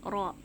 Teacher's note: Ro juga dari ujung lidah bertemu dengan pangkal gusi gigi seri atas